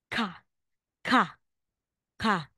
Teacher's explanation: pag nasa initial at middle position po may hangin Okay po so pero sa pag nasa final na po ay wala na pong hangin · So, kahit nasa initial middle po siya, pag nasa initial at middle position po, may hangin. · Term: aspirated